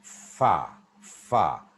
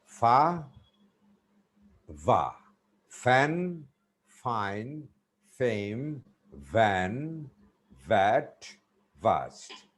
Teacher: we pronounce uh two consonants with our Upper Front Teeth and lower lip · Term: Upper Front Teeth lower lip